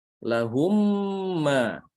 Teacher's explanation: Berlaku idgham. Lahumma didengungkan, ditahan. Namanya idgham mutamathilain.